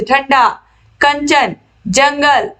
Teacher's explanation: अनुस्वार के उच्चारण में वायु नाक से निकलती है और उच्चारण झटके के साथ होता है, जैसे ठंडा, कंचन, जंगल इत्यादि, यानी कि जिस पर अंग की मात्रा लगी होती है वो अनुस्वार कहलाते हैं।